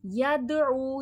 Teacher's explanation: دال میں حرف قلقلہ ہے، آواز پلٹ کر سنائی دے گی،